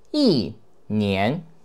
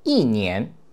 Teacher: when it is followed by the second tone, we turn it into the fourth tone